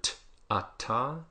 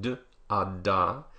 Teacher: You'll notice that the voiceless ones, p, t, and k, are all aspirated, meaning that there's a big puff of air that comes out. The voiced ones, b, d, and g, are not really aspirated.